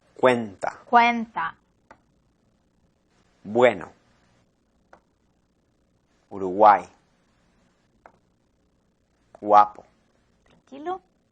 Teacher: Son vocales que preceden otra vocal típicamente más abierta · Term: semiconsonante